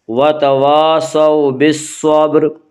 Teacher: صاد کو پر پڑھیں گے، صاد حروف مستعلیہ میں سے ہے، حروف مستعلیہ 7 ہیں جن کا مجموعہ خص ضغ تنقیز ہے جو ہمیشہ ہر حال میں پر پڑھے جاتے ہیں۔